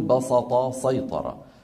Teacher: من العرب من يفخم السين في هذين الفعلين لمجاورتها ما الطاء المستعليه المطبقه فيقول بسط سيطر وعلى لهجه هذه